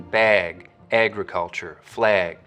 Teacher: you'll also start to get raising and tensing in the trap vowel when it comes right before a g sound, like in bag, agriculture, flag.